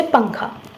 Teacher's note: अनुस्वार का उच्चारण करते समय वायु केवल नाक से बाहर निकलती है।